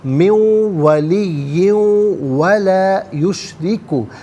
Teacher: من میں نون ساکن ہے، اسے واو کے ساتھ ملائیں گے، ولی میں تنوین ہے دو زیر کی، اسے واو کے ساتھ ملائیں گے، واو کی آواز کو ادا کیا جائے گا۔ دونوں مقامات پر یرملون کا جو قاعدہ وہ اپلائی ہوگا۔